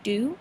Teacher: children change a fricative to a stop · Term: stopping